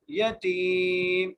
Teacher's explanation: یدعو الیتیم، یا کے اوپر زبر ہے، تا کو اس لیے کھینچ رہے ہیں کیونکہ یہاں پر جائے مدہ کا قاعدہ لگ رہا ہے